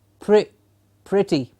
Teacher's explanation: In the word P-R-E-T-T-Y, we have the written vowel E, yes, and a spoken vowel of I, like pretty.